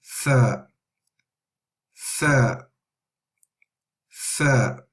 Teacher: Now tha is exactly the same as in thank, yes, thank or think, and you touch the tip of the tongue to the upper incisors, the tip of the incisors